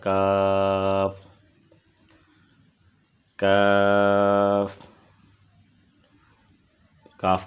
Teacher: کاف کا مخرج زبان کی جڑ جب سخت تالو سے لگے اس سے کاف ادا ہوتا ہے۔